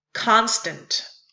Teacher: The second one is the opposite of an iamb. It's the trochee, being a stressed followed by an unstressed syllable, like in the word constant. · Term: trokey